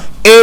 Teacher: कंठ प्लस ताल दोस्तों, ठीक है, इन दोनों का मिश्रण है।